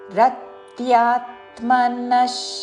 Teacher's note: విసర్గ ఉచ్చారణ తాళవ్య ష